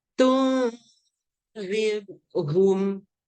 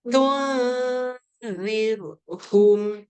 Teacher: Tun, ready nak keluar zal tu kena keluar lidah siap-siap lah. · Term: ifak hakiki